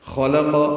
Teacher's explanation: خا اور قاف پورا ہے، لام باریک ہے